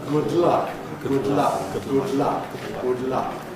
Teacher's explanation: We make the D closure all the way around. Good luck. Then we release the side. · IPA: ˌgʊd ˈlʌk, [ˌgʊd ˈlʌk]